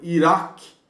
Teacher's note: O Kof é um som enfático, é um Q, como você vai falar lá atrás, é o Iraque.